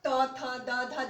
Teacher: फिर हमारा दंत हो गया त थ द ध। जब हम करते हैं तो जो दांत में हमारा छू जाता है।